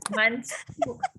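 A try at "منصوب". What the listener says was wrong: Anak murid saya sebut sod jadi shin. Mansyub. Dia sod mansub. Dia ambil daripada perkataan nasab.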